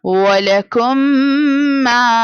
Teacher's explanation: idgham shafawi means we have to do ghunna